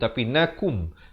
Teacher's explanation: Kaf baris dhammah bunyi ku, bukan bunyi ko. Jadi kum. Su, 4 atau 5 harakat.